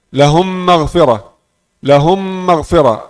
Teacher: Satu mim bertasydid. Jadi mim yang pertama sudah hilang, sudah masuk dalam mim yang kedua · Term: idgham